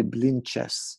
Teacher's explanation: In Israel, people say blinches with the CH sound